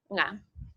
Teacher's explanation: And when it precedes ka and ga, it's realized as the velar nga.